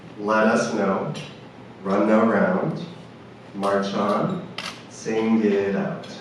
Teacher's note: we're linking from a consonant sound at the end of one word to the vowel sound at the beginning of the next word